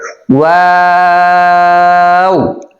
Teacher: এটার উচ্চারণের ক্ষেত্রে একটু খেয়াল করতে হবে। প্রথমে আমাদের ঠোঁট গোল হবে আর শেষে ঠোঁট গোল হবে, মাঝখান দিয়ে আমাদের ঠোঁটটা চ্যাপ্টা হবে।